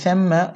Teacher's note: ওয়াজিব গুন্না মিমে তাসদীদ হয়েছে গুন্না করতে হবে